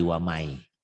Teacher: Sementara kalau idgom nun mati atau tanwin bunyi n-nya berubah menjadi huruf yang ada di depannya. Misalnya nun mati ketemu ya, berarti bunyi n-nya berubah menjadi y. Waman jadi wamai.